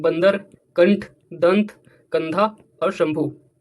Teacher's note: तो अनुस्वार क्या होते हैं, इनका उच्चारण जोर से होता है, और इनमें उच्चारण करते समय ध्वनि जो है नाक से निकलती है।